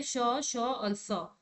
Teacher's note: यानी कि उष्म व्यंजन जो तीन उष्म व्यंजन है वो आते हैं अघोष में।